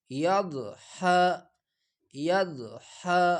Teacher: جبڑوں کے جو دانت ہے ان کے ساتھ زبان کی کروٹ لگا کر ضاد ادا ہو جاتا ہے. اتنا دال کی طرف بھی مائل نہ کرے اور ضا کی طرف بھی زیادہ مائل نہ کرے، بلکہ ضاد بڑا کرے.